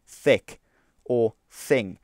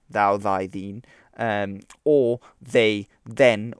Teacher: the thorn is pronounced like a breathless th sound